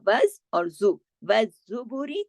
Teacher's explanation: بالبیناتی، بیناتی والزبوری، دیکھیں زا پہ جو ہے تشدید ہے، اس لیے دو دفعہ پڑھا جائے گا